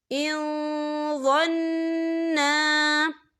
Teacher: ان نون ساکن ہے اور نون ساکن کے بعد وا آ رہا ہے، وا جو ہے اکفا کا ورڈ ہے تو ہم یہاں اکفا کریں گے، نون ساکن کی آواز کو ناک میں چھپائیں گے